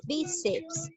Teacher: ¿Dónde lleva la mayor fuerza de voz? En la sílaba bi. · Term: palabra grave